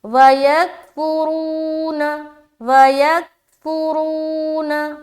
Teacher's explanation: وَيَكْفُرُونَ وَيَكْفُرُونَ رو میں کھینچ رہے، اور را کو کھینچتے ہوئے را کو موٹا رکھنا ہے کیونکہ را کے اوپر پیش ہے